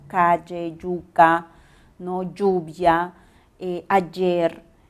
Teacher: el gran gusto por articular el sonido Y, y siempre somos yeístas, por eso decimos calle, yuca, ¿no?